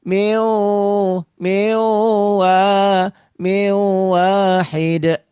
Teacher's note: Jadi dibacanya betul idgham bigunah dimasukkan, diidghamkan, dileburkan, disertai dengan dengung. Miu gitu ya. N-nya hilang